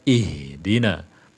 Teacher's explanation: H makhrajnya pangkal tenggorokan, bukan tengah tenggorokan, bukan. Karena dalam perihal makharijul huruf, nanti tenggorokan itu dibagi 3. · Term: huruf H